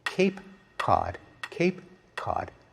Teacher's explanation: back in the mouth the other it's produced much farther forward we don't notice that we pronounce ke in two different ways depending on whether it comes before an a or an ah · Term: co-articulation